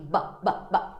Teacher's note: Olha só, o som de B, ele é vozeado, ó. B, b, b. Suas pregas vocais vibram se você coloca a sua mão aqui.